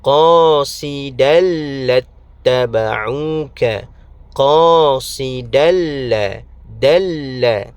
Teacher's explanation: Idgham bila ghunnah. Masukkan tanwin qasidan ke dalam huruf lam.